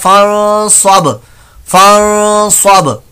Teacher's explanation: बा साकिन वक्फ की सूरत में यहां पर कलकला हो रहा है